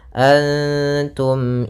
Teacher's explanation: mim sukun bertemu dengan Hamzah maka kita namakan dengan izhar syafawi cara membacanya adalah suara mimnya tidak boleh ditahan Antum tidak boleh seperti itu tapi jelas Antum a pada lafal